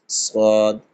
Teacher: জিভে 2 পাশ থেকে হালকা হাওয়া বের হবে, সদ, কোনো রকম সিটি কাটবে না, এটা হবে সদ।